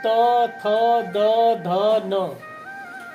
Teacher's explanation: इसको बोलने में जीभ दांत में छूती है। जैसे बोलिए त थ द ध न, तो ये दांत में छू जाती है। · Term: दंत वर्ण